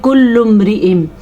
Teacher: اب اس میم کے اوپر شد نہیں ہے تو یہاں پہ ہم غنہ نہیں کر رہے